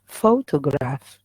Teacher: it has three syllables we have faux toe and then graph three syllables but the stress is on the first one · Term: primary stress